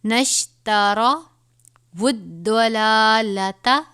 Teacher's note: یہ دعاد ہے، اس کو پر پڑھیں گے یعنی موٹا کر کے، شد ہے تو تھوڑا سا سختی سے پڑھیں گے